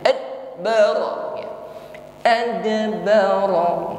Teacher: jangan ragu-ragu untuk menampakkan bunyi pantulan pada huruf dal. Ada, jangan ditahan atau disembunyikan. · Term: qalqalah